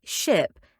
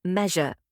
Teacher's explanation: The tongue is slightly further back than for alveolar sounds. This is where we get sounds like the sound in ship and the sound in measure. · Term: Postalveolar